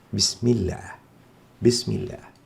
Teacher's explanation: إذن هو الله وعبد الله في الحالتين حالة الفتح والضم تكون لام لفظ الجلالة مفخمة، في حين أننا إن كان ما قبلها مكسور كما في بسم الله، هنا الميم مكسورة فتأتي لام لفظ الجلالة هنا مرققة لا مفخمة. نقول بسم الله، لا نفخمها فنقول بسم الله، هذا خطأ.